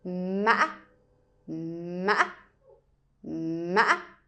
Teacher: it sounds like a broken tone, which means while you're going up with a tone, you break it in the middle. So my tip is it sounds like you're walking, and then you trip. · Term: wavy tone